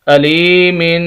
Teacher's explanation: اگر وقف نہیں کریں گے تو غنہ کریں گے، ناک میں آواز جائے گی